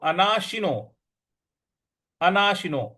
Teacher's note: है? अंतवता इमेहा नित्यसक्ता शरीरण अगला पद है अनानो अनाशिनो देखिए अना श पर छोटी इ की मात्रा है तो अनाशीनो नहीं पढ़ना है